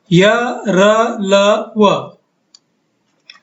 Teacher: ये व्यंजनों का उच्चार या तलफ्फुज करीब करीब स्वर या वावुल की तरह होता है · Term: अर्धस्वर